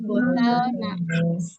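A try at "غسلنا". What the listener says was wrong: Yang gosal, nah, terakhir panjang ya, karena nahnu. Gosal, nah.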